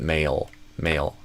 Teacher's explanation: I do a dark L at the end.